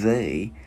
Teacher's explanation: mình đưa lưỡi qua giữa hai răng, mình ép rung.